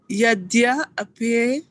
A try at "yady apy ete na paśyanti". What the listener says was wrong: No. Yadya, why are you saying apyate? There is no a here. Go slow.